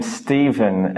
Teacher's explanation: in the name Stephen it sounds like a V, it's voiced